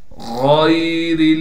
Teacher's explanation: غین کو موٹا کر کے پڑھنا ہے، را کو بالکل باریک کر کے پڑھنا ہے